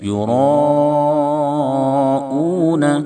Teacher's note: را کے اوپر زبر ہونے کی وجہ سے را کو موٹا کریں گے یعنی پر ادا کریں گے ۔ یراؤون، الف مدہ کے بعد حمزہ اسی کلمہ میں ہے · الف مدہ کے بعد حمزہ اسی کلمہ میں ہے اس لیے مد متصل ہوگا، 2 الف یا 2.5 الف کھینچیں گے ، تقریباً 2 یا 2.5